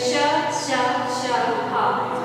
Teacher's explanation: जीवा हमारी घर्षण करती है, कहीं स्पर्श नहीं करती लेकिन घर्षण करती है, श श श ह उष्म वर्ण कहते हैं।